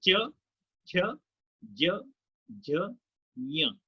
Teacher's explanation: जीभ का पिछला हिस्सा आपके तालू से लग रहा है, मूर्धन्य कहते हैं इसे।